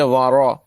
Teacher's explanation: را زبر را، را باریک آواز میں نہیں پڑھیں گے، وارا، وارا ای نہیں پڑھیں گے بلکہ وارا۔